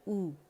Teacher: حمزہ جو ہے اس پہ دمہ گولائی سے ادا کریں گے مخرج سے پڑھ کے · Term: حمزہ دمہ